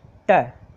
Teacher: मसूड़ों के पास में अपनी जीभ टकराती है